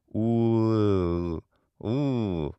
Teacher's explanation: instead of oo, we unround the lips and we get oo, oo. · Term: high, back, unrounded vowel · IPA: ɯ